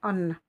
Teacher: je vais la prolonger en 4 temps. 4 fois plus longtemps que la normale